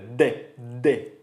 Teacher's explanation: El sonido se obstruye por completo y luego se libera y es dental porque tú pones tu lengua en los dientes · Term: D plena